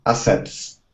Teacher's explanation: the T and the S, they're formed together.